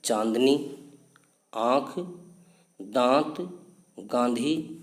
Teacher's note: जैसे चांदनी आंख दाख गांधी आदि इन शब्दों के उच्चारण में फेफड़ों से निकलने वाली हवा नाक और मुंह है दोनों से बराबर मात्रा में बाहर निकलती है है तो यहां पर चंद्रबिंदु का प्रयोग किया जाता है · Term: अनुनासिक